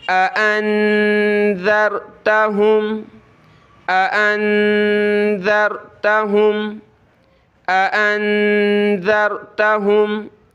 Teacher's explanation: اانذرتہم، اانذرتہم، اانذرتہم ام لم تنذرہم، نون پہ ہم اخفا کریں گے، ناک میں آواز پیدا کریں گے، اور ذال پہ ہم نے زبان نکالنی ہے تھوڑی سی، اور ذال کو آگے را سے ملانا ہے، ٹھیک ہے۔